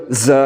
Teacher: तो ज़ा हरूफ सफ़ीरिया में से है, तो ज़ा को हमने किस तरह पढ़ना है, ज़ा को पढ़ते हुए सीटी की तरह तेज़ आवाज़ निकालनी है